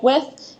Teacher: the th sound often becomes a CH sound in words like with